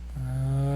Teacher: And use another gentle onset on the final vowel. Reduce your volume on the final voiced N consonant.